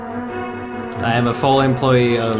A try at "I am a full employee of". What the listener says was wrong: Can you say it with a little bit more gusto? Because you sound like it's bad news, the way you delivered it.